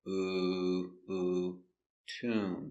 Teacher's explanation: Tomb has a long oo. So, we make the sound tomb. Remember, the position is low.